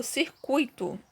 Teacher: o U e o I eu falo bem rápido. Então, eles não se separam. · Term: ditongo